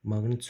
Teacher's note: Maqnit sözündə özündən sonra N cingilti samit gəldiyinə görə Q'nın olduğu kimi qalır. Və K səsini vermir.